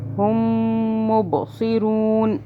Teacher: آگے ہم نے سٹاپ کیا تو ہم نے نون کو ساکن کر دیا، زبر کے ساتھ نہیں پڑھا